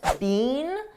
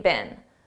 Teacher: in British English they pronounce it more stressed, been, but in American English we don't do that. We just say been. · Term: very unstressed been